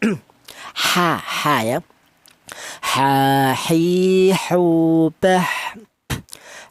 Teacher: Untuk huruf H ini berada di tengah tenggorokan